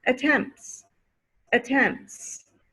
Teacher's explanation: if you add an s attempts attempts no more t sound